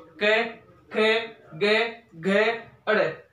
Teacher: हमारे कंठ में जीवा का स्पर्श होता है, इसलिए इन 5 वर्ण को कहते हैं कंठ व्यंजन